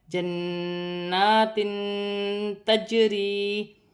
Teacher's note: جیم ساکن ہے، حرف قلقلہ میں سے ہے، قلقلے کے ساتھ ادا کیا جائے گا